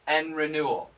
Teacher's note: the n canceled the d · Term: cancellation